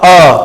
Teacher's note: हिंदी में अ स्वर केंद्रीय स्वर है, इसके उच्चारण में जीभ का मध्य भाग थोड़ा सा ऊपर उठता है। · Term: मध्य स्वर